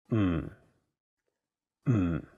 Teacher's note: notice that there is no vowel in the syllable so you have to really stress the um sound